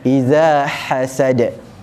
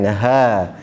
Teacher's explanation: Dia lagi pedas dan makhrajnya di tengah halkum. Berbeza dengan ha simpul. Ha simpul tidak pedas. Dia di pangkal halkum, dia hanya keluar nafas saja. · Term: ha hasad